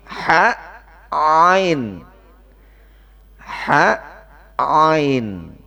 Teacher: kalau tenggorokan bagian tengah itu tempat keluarnya huruf ha dan huruf ain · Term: tengah tenggorokan